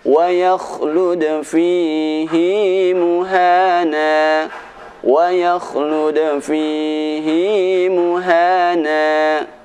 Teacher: ada satu kata fihi di dalam Al-Quran ini yang mana bacaan hi harus dibaca panjang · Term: bacaan fihi